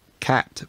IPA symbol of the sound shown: æ